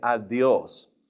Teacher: Now, notice adios has an accent on the O. And also, that D is going to be a little bit forward, too. Push your tongue a little bit forward and say adios.